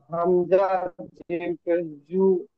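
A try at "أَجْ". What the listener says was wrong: আজ, জু না, হামজা জিম জবর আজ।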